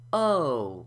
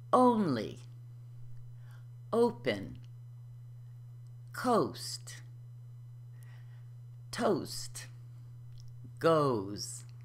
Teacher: O is a diphthong this means that it's a combination of two vowel sounds it starts with ellipse slightly rounded and the tongue halfway raised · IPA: /o/